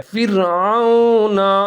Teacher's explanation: عین اور واو دونوں ملا کے پڑھیں گے، ہونٹ گول کر کے پڑھیں گے